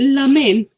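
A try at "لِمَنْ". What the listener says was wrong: So you can see the kasra there. It's liman.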